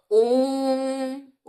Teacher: जब ओम का उच्चारण करेंगे तो ओ को खींचेंगे। तो ये जो है प्लुत कहलाता है।